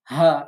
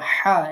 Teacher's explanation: হলকের শুরু থেকে উচ্চারণ করবেন হা এটা আর হা এটা হলকের মধ্যস্থল থেকে উচ্চারণ করতে হবে